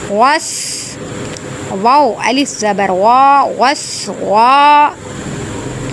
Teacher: سین میں یہاں سیٹی کی آواز آئے گی